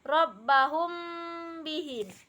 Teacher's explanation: Kemudian yang kelima yaitu ikhfa syafawi, adalah ketika mim sukun atau mim mati bertemu dengan huruf ba, maka membacanya disertai dengung, kemudian mempertemukan dua bibir